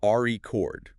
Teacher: If you stress the first syllable, record, that's a noun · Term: word stress